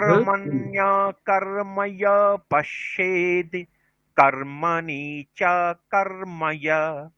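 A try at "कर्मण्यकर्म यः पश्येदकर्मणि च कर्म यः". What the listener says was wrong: না, এখানে অকর্মণি, পশ্যেৎ তয় হলন্ত যুক্ত অ, এই দুটো মিলে দ হয়েছে, ঠিক আছে? আমরা এটাকে আলাদা বলছি, পশ্যেৎ তারপরে আবার অকর্মণি। কর্মণ্যকর্ময়ঃ পশ্যেৎ তয় হলন্ত, অকর্মণি চ কর্ময়ঃ।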